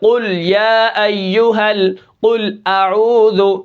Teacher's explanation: یعنی اگر ان کے اوپر پیش ہو، جیسے قتلوا قاف کے اوپر پیش ہے، جیسے قل یا ایھا قل اعوذ، ٹھیک ہے، یہاں پر دیکھیں قاف موٹا ہو رہا ہے کیونکہ اس کے اوپر پیش ہے